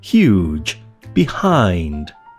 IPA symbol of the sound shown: h